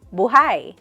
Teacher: When the emphasis is on the last syllable, it means alive.